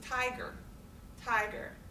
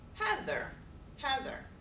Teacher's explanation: it's a stress rhythm of weak, or strong to weak in English. So we would expect that two-syllable words in English then would mostly have strong, then weak syllables. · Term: trochaic stress rhythm pattern